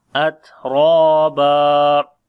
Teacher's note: ra and alif both we read in heavy sound, and ba we read with one fatha when we stop, so it will be at-raba.